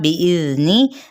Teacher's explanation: اس نون کی حرکت کو لمبا نہیں کریں گے، یعنی کسرہ کو